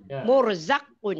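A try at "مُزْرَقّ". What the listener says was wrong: Kenapa murzaqun? Hurufnya tertukar. Balik. Hurufnya tak boleh tertukar.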